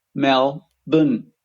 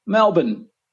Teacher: the second part is just bin b n no vowels no R sound